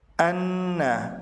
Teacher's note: an ditahan sekitar 2 harokat karena nun bertasydid